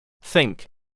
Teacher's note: Back of tongue to back roof. Nasal. Plus K. Think.